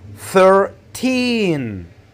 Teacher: In this example, you have to stress the second syllable, which is teen. You have to make it longer and louder.